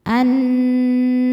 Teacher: nun bertasydid cara bacanya berdengung tahan dengungannya kurang lebih dua harakat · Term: ghunah musyaddadah, gunnah musyaddadah